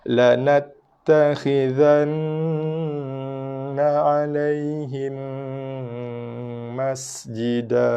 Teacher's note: jaga desiran pada sin sifat sin desir